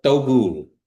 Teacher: the D sound with the line through it, that indicates your teeth are coming together with your tongue